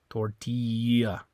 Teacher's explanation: When you have a double L in Spanish, it always is going to make like a Y sound, like the letter Y.